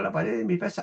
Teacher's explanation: Yo digo la pared de mi pieza, no pronuncié en absoluto la D, la omití, no la pronuncié. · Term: pérdida de D